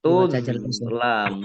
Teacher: Tuzlamun mim domah wawu sukun mat tabi'i tetapi karena bertemu dengan huruf terakhir yang dibaca sukun karena wakof maka menjadi mat arif lisukun. Dibaca panjang boleh 6, 4 atau 2 harokat.